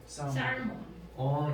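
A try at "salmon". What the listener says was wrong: 얘는 묵음이에요. 세먼이라고 하거든요.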